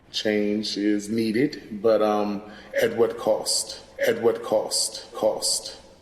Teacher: Another feature that we see in DC, similar to New York, is the raised thought cloth vowel, that ah. This is a new feature in DC, and we think it's part of a pattern of DC varieties becoming more like northern cities as opposed to the south.